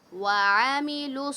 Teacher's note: منو، واو ساکن سے پہلے پیش ہے تو ہم واو کو کھینچ رہے ہیں. منو وعملوا وعملوا عین کو ہم نے حلق سے نکالا